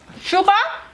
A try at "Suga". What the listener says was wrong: Suga. Suga, S-U-G-A, without the R.